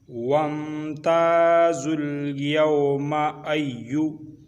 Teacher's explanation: लाम के ऊपर मुड़ी हुई शद है और ज़ा के ऊपर पेश है और वाव और अलिफ़ और दूसरा अलिफ़ ये दोनों साकिन हो जाएंगे। तो ज़ा और लाम को मिला के पढ़ना है